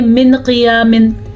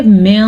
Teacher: तो नून साकिन या तनवीन की आवाज़ को छुपा दिया जाता है और गुन्ना भी किया जाता है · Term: इख़्फ़ा